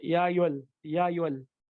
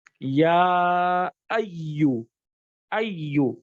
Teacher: या और अय्युहल के दरमियान फासला होना चाहिए, यानी या कहा आपने और अय्युहल, ये दोनों अलग वर्ड्स हैं।